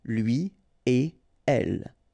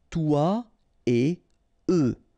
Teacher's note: after this conjonction et, like we've got here, you don't make any liaison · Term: no links after et